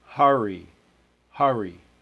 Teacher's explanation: indicating that there's a little bit of a separation between the vowel and the R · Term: syllable break